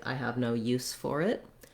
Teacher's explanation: our letters SE say the S sound, the S, voiceless sound, rather than Z. So I wrote that here with two S's because typically when you see two S's, you can count on that being voiceless S sound.